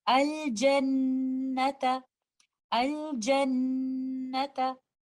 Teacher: When they come after lam at ta'arif, we do idhar al-qamari. We recite the letter lam clearly. We will do the idhar of letter lam and also the most complete gunna on letter noon